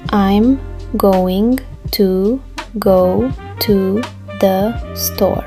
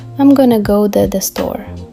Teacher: The T in two turned into a soft D. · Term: Connected speech